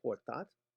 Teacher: Notice how the A shortens before final T.